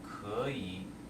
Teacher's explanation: You're still going to change the third tone to the second tone. Okay. So 可以, second tone here, and third tone.